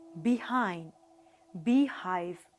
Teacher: H is a voiceless glottal fricative. Here, the vocal cords are kept close together and the air escapes through the narrow glottis with audible friction.